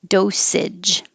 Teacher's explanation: This AGE is not stressed, so it changes to idge, compared to if it was just the word age, spelled AGE.